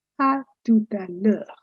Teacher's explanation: There is no break practically between the words. They all go in a continuum, à tout à l'heure, as if it were one single term.